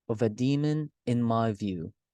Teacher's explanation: An anabist is when there are uh, unstressed unstressed syllable, two unstressed syllables followed by a stressed syllable